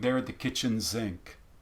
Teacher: Is the nature of that sound typically an S, but it seems to be getting voiced?